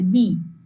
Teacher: বি উচ্চারণ করতে গেলে দুটো ঠোঁট টাচ করে যাচ্ছে